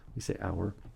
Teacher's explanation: in English, we don't pronounce the H when we say hour.